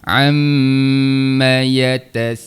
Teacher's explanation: Ha mim baris atas jangan panjang sebab dia tak ada huruf mad selepasnya.